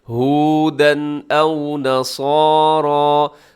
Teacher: تنوین کے بعد آگے حمزہ ہے، اب یہاں پہ اظہار کریں گے، غنہ نہیں کریں گے